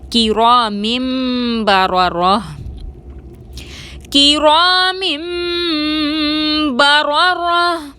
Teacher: کاف کو باریک ادا کریں گے، را پر زبر ہے، را کو موٹا پڑھیں گے، الف مدہ ہے، 2 حرکت کے برابر کھینچ کر پڑھیں گے، میم کے نیچے 2 زیر کی تنوین ہے اور اس کے بعد حرف با آ رہا ہے، نون کو میم سے بدل کر غنہ کے ساتھ ادا کریں گے